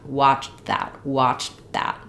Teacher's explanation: both my CH sound and my T sound are a bit muted and unreleased. So I'm going to go right from the CH to a muted T into my TH for that.